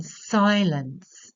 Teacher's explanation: a stressed and then an unstressed syllable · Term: trochee